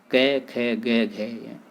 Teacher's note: ये सभी कंठ ध्वनियाँ हैं और इनका उच्चारण स्थान कंठ है